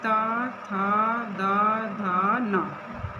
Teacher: इनको जब आप बोलेंगे तो जो जी्हा हमारी वो हमारे दांतों ऊपर वाले दांतों को स्पर्श करेगी। · स्पर्श कर रही है जिह्वा दांतों को, इसलिए इनको दंत इनका उच्चारण स्थान है।